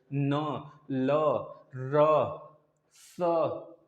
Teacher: जीभ का जो आगे वाला थोड़ा सा हिस्सा होगा ना, वही जाके तालब में सटेगा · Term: वत्सर्य